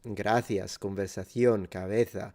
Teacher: only in Spain you find people using the th sound, the interdental fricative